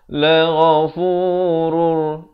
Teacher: Daripada ghafurun jadi la ghafurur. Terus masuk tanpa dengung. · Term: idgham bila gunnah